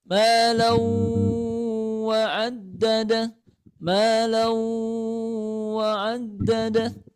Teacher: Kemudian ada tanda tasydid. Maka cara bacanya diidghamkan, maksudnya dimasukkan suara tanwinnya ke huruf wawnya. Kemudian biagunnah disertai dengan dengungan atau tahan dulu sebanyak 4 ketukan. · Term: idgham bi gunnah